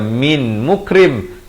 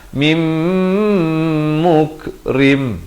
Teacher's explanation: nun mati bertemu mim. Idgham bi gunnah, masuk beserta dengung. Jangan baca min mukrim, tapi baca mim, dua harakat, mukrim.